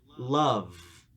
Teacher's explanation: like a [Music] another thing to keep in mind is that sometimes this sound loses its voicing at the end of the word and sounds too much like an f so try to keep that buzz going until the sound is completed